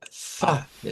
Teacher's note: Y esto es un sonido labiodental fricativo sordo. Así se clasifica el sonido de la F, de la A fa, de la fa.